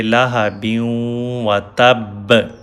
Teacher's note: اب وقف کی وجہ سے ہم اس کو پڑھیں گے لاہا بیوں و تب، یہ فتحہ نہیں پڑھیں گے، لیکن یہ با پہ شدہ سائن ہے، با کو 2 دفعہ پڑھا جانا ہے۔ لاہا بیوں و تب، کیونکہ دونوں با ساکن ہیں، دونوں پہ زبر زیر پیش نہیں ہوگی، تو تھوڑا آپ کو فوکس کر کے اس کو پڑھنا پڑے گا۔